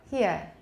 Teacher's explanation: they count it as one syllable because a diphthong means it occurs in the same syllable but if you say it's slow it sounds like two syllables